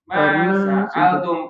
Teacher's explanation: Yang alnya dia agak lamain.